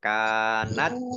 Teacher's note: Wa in kanat kaf fathah alif matobi'i panjang 2 harokat, sukun ya dibaca T-nya ada keluar S ya sedikit